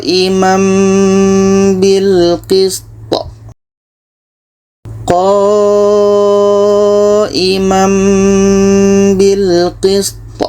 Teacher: Kalau ada mim kecil seperti ini, itu bermakna hukumnya iklab. Jadi bunyi tanwin ini kita tukar kepada bunyi mim, dan di sini ada dengung.